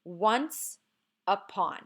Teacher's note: I figured out the first syllable is stressed